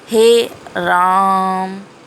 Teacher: जो प्लुप्त है इसमें ह्रस्व से 3 गुना समय लगेगा